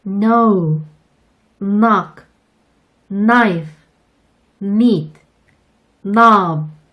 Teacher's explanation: K의 발음이 묵음인 경우도 있어요. K가 N을 만나면 부끄럼쟁이 K는 숨어버리거든요